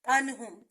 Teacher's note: اگر حروف حلقی حمزہ ہا، عین ہا، غین خا میں سے کوئی حرف آ جائے تو وہاں پر اظہار حلقی ہوگا، یعنی نون کو ظاہر کر کے پڑھیں گے، غنہ نہیں ہوگا